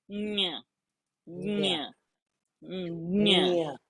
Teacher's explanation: So the base of the tongue, not the tip of the tongue, the broad part of the root of the tongue should touch that soft palate